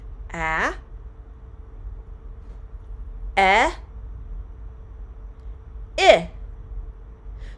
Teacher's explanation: So your tongue went from a low position in your mouth, ah, to a mid position, eh, and now with ih, your tongue is even higher in your mouth.